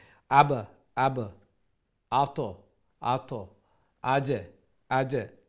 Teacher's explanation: কাফ তোয়া বা জিম দাল, এই পাঁচটা লেটারও সাকিন হয় যদি, অথবা স্টপর কারণে সাকিন হয়, তাহলে এগুলাত আমরা একো সাউন্ড করতাম। সাউন্ডটা একটু বাউন্সিং হইতো, সাউন্ডটা একটু লড়তো, জাম্পিংয়ের মতো একটু ডেং খাইতো। জেলা বল মারলে আবার আওয়াজ করে জেলা এইভাবে আব আব আতো আতো আজে আজে, একটা আর একটা একো সাউন্ডের মতো যে সাউন্ড হয়, এইভাবে এগুলি কলকলা একটা হইতো।